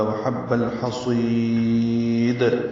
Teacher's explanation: وحب الحصید، لام ساکن پہ اظہار قمری ہے، حا وسط حلق سے ادا ہوگا، صاد پر ہے، سوئی یائے مدہ ہے، اور وقفاً دال ساکن ہو جائے گی تو قلقلہ ہوگا. وحب الحصید لمبا کر کے دال ساکن پہ قلقلہ کریں گے